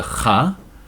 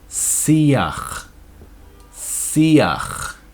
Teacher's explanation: when you get a chet at the end of a word, it goes with a letter before and it's kind of a ach